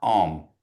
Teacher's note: And so you see the nasalization goes on the ends. You're not saying yan tan om, but ya ta om.